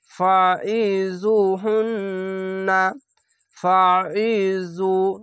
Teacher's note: এখানে জু এরকম শুধু হবে না, এটি মোটা অক্ষর জু, এভাবে মোটা করে পড়বেন।